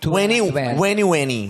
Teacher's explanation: You don't pronounce the T